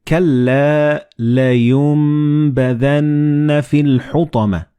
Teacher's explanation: So the noon and ba, they will be assimilated together and you will pronounce them as meme